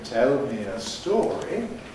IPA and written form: ˈtel mi ə ˈstɔːri (tell me a story)